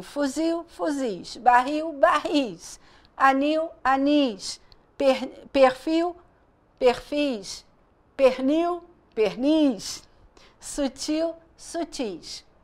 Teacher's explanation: elas são oxítonas ok que tem a última sílaba pronunciada com mais força